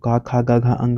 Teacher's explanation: क ख ग घ अंग जो है व कंठ से निकलता है